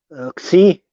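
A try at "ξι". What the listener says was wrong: Nope. It's not like it's not like the English. It is he. Yes. Yes.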